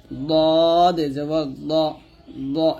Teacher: জিহ্বার গোড়ার কিনারা উপরের মারির দাঁতের সঙ্গে লাগিয়ে দত মোটা উচ্চারণ করতে হবে